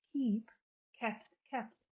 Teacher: The vowel of the past tense is shortened or short today. We don't know that it was shortened, but it was because it's a closed syllable. · It only becomes relevant in Middle English, where long vowels shorten in closed syllables. So the word kepte in Middle English shortens its vowel, even though historically it's a long vowel, because the first syllable is closed. And this is how we arrive at this paradigm of modern English: keep, kept, kept.